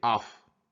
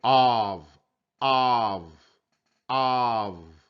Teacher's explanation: with the 2f we say off but with one f we say of of of with the v sound not the f sound